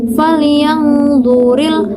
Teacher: ketika kita mengucapkan kata zuril, nah lidah kita otomatis akan lengket pada langit-langit yang ada di atas. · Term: itbaq